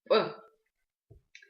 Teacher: А если резко разомкнуть губы без придыхания, то получается как раз П.